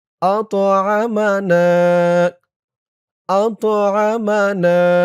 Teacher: এক আলিফ টান জবরের পরে খালি আলিফ